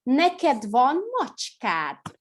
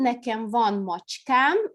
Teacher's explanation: конечное «а» у нас удлиняется, если мы притяжательный суффикс добавляем